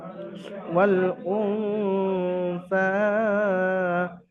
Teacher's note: তো নুন সাকিনের পরে হরফে ইখফা থেকে সা আসছে, তো নুন সাকিনের আওয়াজকে এক আলিফ পরিমাণ গুন্না সহ পড়তে হবে